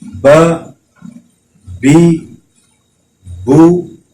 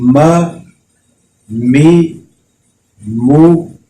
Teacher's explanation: با بھی ہونٹوں سے ادا ہوتا ہے اور میم بھی ہونٹوں سے ادا ہوتا ہے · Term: قریب المخرج